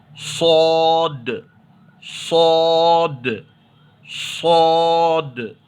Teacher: تو صاد کو جب ادا کریں گے تو ویسے ہی سامنے کی دونوں دانتوں کو تھوڑا سا ملا کر کے، منہ کو تھوڑا سا، ہونٹوں کو تھوڑا گول کر کے موٹا پڑھیں گے